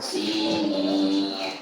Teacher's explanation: Ada harakat kasrah sin lalu berhadapan dengan ya sukun. Maka dihukumi mad wa'i dan dibacanya dua harakat.